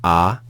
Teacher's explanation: we have the alpha with with no aspiration